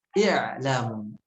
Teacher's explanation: ketika mengucapkan kata i'lamu, hamzah wasolnya dijelaskan, jangan dekat ke bunyi ain